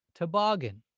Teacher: to my ear that second vowel sound sounds longer